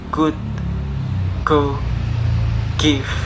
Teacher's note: the place is velar, and the manner is plosive